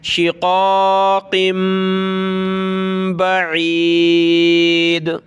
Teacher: یہ تنوین ہے، دو زیر کی تنوین، قاف کے نیچے دو زیر اس کی تنوین، تو اس کے بعد ہے با، تو یہاں چھوٹی میم آ گئی، یہ دیکھیں اسمال میم. تو ہم نے اس قاف کو میم کے ساتھ پلس کر کے اس کے بعد با پڑھنی ہے، اور اس جگہ پر ہم نے ناک میں آواز پیدا کرنی ہے